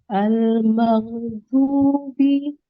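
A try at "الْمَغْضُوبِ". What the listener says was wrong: Huruf dotnya masih PR ya ya?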